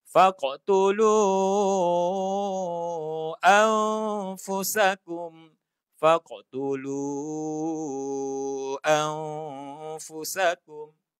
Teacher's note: Yang lu ini jaiz 4 harakat.